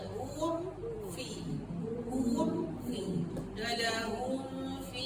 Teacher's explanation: Jadi bila kita jumpa mim mati tu, mim sakinah tu betul-betul kena rapat